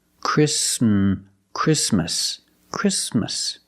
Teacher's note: the t is between consonants so it is silent link the sound s with the m